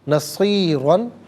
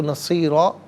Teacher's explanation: دو زبر کی تنوین وقف میں الف سے چینج ہو جاتی ہے